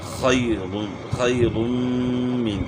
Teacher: خا کو موٹا کرنا ہے، گلے کے شروع سے آواز نکلے گا